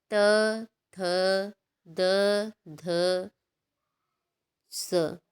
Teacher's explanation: जिन व्यंजनों के उच्चारण में जिह्वा की नोक ऊपरी दांतों को स्पर्श करते हैं, उन्हें दंत व्यंजन कहते हैं